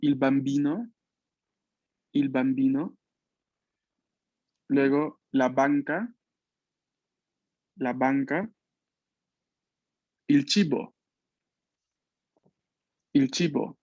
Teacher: Los labios cerrados que luego se abren para poder pronunciar este sonido.